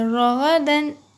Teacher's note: را کو پر پڑھیے یعنی بھر کے، پر پڑھنا ہے یعنی منہ بھر کے پڑھنا ہے. زبر ہے نا را کے اوپر اس لیے رغدن، زبر رغدن.